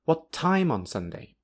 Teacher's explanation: time is the last word at the higher pitch, and on Sunday is suddenly lower. Therefore, the down arrow is before time because this is the last word at the higher pitch.